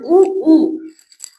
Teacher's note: இதழ்களை குவிப்பதால் பிறக்கும் எழுத்து